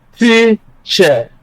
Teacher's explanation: Stress is on the first syllable because that syllable has a stronger vowel quality. You have the long E sound, E, teacher, on the first syllable, and that is why that syllable is stressed.